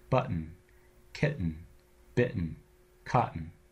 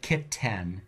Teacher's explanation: whenever you have a word where T precedes a syllabic n the T goes away and it's replaced by a catch in the back of your throat